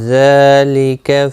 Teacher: ذال کے اوپر کھڑی زبر ہے، ایک الف کی مقدار کے برابر کھینچنا ہوگا